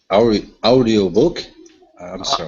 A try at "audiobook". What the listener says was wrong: So instead of ow, okay, we don't need to pronounce the oo. The oo is silent. Okay, so instead of ow, it's only ah.